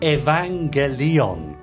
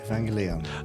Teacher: e not e and I is always e never I third the accent is probably best on the third syllable